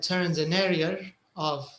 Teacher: sometimes if you have 2 vowels, like this example, area of, you might hear another R. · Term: R sound